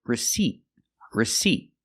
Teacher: the second syllable is stressed and it makes the long e sound like green beans